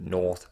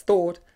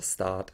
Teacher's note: As my accent is non-rhotic, you will notice that north sounds the same as thought and start sounds the same as father when I say it.